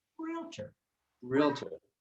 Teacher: and the first syllable is longer